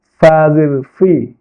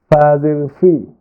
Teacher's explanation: ফা বলার সময় নিচের ঠোঁটের পেট সামনের উপরে দুই দাঁতের আগার সঙ্গে লাগবে।